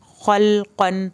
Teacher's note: لام ایسا لفظ ہے جب یہ ساکن یعنی جزم کی حالت میں ہوتا ہے یہ ہل جاتا ہے، آپ نے خلقن زبان روکنی ہے، اس کو ہلانا نہیں ہے